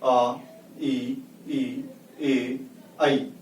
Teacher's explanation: जो ओंठ हैं वह कभी भी गोलाकार रूप धारण नहीं करते, इसलिए इनको कहा आवृत्तमुखी।